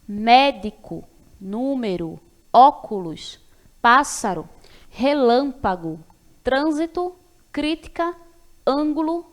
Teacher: palavras proparoxítonas que é quando a sílaba tônica é a antepenúltima